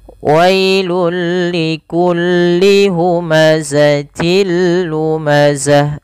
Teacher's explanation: Maka wailul li, sehingga kita namakan hukum tersebut dengan nama idgham bila gunnah. Idgham yang tidak disertai dengan gunnah, yaitu hanya masuk saja. Wailul likulli humazatil lumazah, sama pada lafal lumazatil, lu ada tanwin yaitu berupa kasratain bertemu dengan lam, maka cara membaca masukkan tanwinnya kepada huruf lam.